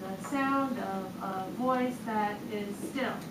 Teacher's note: would do the sound of a voice that is still anapest unstressed unstressed stressed three so anapestic